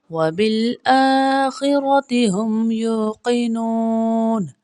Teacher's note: الف کے برابر لمبا کیا جاتا ہے، یو میں واو مدہ، نو میں بھی واو مدہ کو ہم ایک الف کے برابر لمبا پڑھیں گے